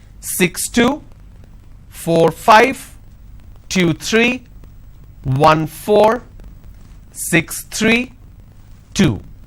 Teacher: for every two digit the second digit my tone is going up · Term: intonation